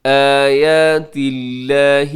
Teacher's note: لفظ اللہ باریک کیونکہ اس سے پہلے تا کے نیچے زیر